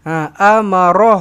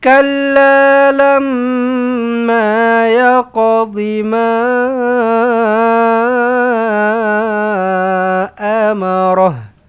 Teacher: Ha amarah ro eh. Bukan r a ra bukan tetapi ro amarah.